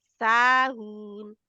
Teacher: सा दो अलिफ के बराबर लंबा, दो काउंट के बराबर लंबा होगा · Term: मद